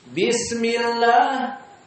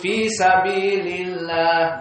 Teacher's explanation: Dengan pembacaan la. Kenapa muraqqaqah? Karena kasrah sebelumnya.